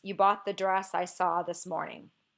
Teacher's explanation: it goes unstressed stressed unstressed stressed unstressed stressed unstressed stressed unstressed · i have a line that's mostly written in iambic tetrameter but there's an extra syllable at the end so you can see i ended with an unstressed syllable and i should have ended with a stressed unstressed stressed foot